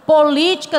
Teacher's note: a divisão silábica dessa palavra é por Li com acento T Observe que o Li é a palavra que eu imprimo mais força